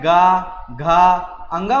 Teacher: जब मैं गा, घा, अंगा बोलूँगा तो इसमें क्या है, कंपन उत्पन्न हो रहा है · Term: घोष वर्ण